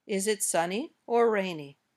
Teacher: give a choice between two or more things in this case the intonation goes up on the first choice and down at the end